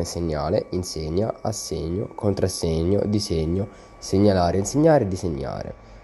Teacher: una sibilante di partenza s che si trasforma in una generosa palatale gn